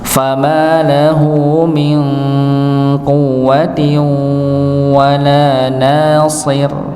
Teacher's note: so-nya tebal, ra-nya tipis